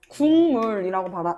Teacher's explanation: 뒤에 있는 비음, 미음이 앞에 있는 기억에 영향을 주어서 기억은 뭘로 발음이 된다? 이응으로 발음이 된다.